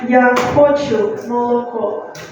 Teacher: It should be the last syllable that is stressed in the word milk.